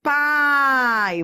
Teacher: vai da vogal que é o som forte para o som fraco da semivogal